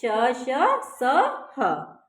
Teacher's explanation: इनका उच्चारण करते समय मुंह से गर्म हवा रगड़ के साथ निकलती है